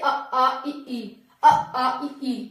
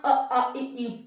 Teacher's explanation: नाक से नहीं केवल मुंह से इनका उच्चारण होता है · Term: निर अनुनासिक